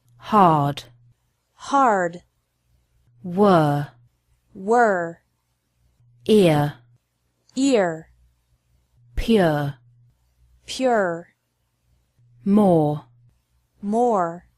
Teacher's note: r is pronounced stronger in American English